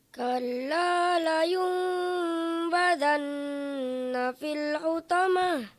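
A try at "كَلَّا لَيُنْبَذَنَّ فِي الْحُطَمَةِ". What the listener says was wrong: Kurang lama dengungnya. Fil hu, bukan fil. Fil hu. Kalla layumbadanna fil hutamah.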